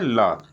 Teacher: ल के उच्चारण में वायु जीभ के किनारे से निकलती है। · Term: पार्श्विक व्यंजन